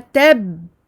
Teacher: Ta, fatha, ba, shadda, tab. Je bloque en gardant mes lèvres fermées. Je ne fais pas de qalqala ici en plein milieu d'une shadda.